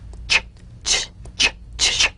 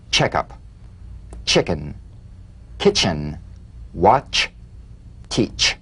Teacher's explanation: A crisp staccato treatment. Feel a sharp, crisp, percussive sensation between the tip of the tongue and the gum ridge. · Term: crisp staccato ch